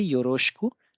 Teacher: तो योरोशिकु लिखा जाता है और इसका उच्चारण होता है योरोशकु। डिवॉइसिंग हो जाता है ई की मात्रा, क्योंकि ये श और ख के बीच आता है।